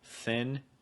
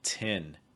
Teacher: they turn th's into t's or d's especially in rapid speech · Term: th sounds